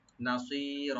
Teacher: নাসির, না ওপেন থাকবেন, সোয়াটাকে একটু ডিপ করে একালে টানবেন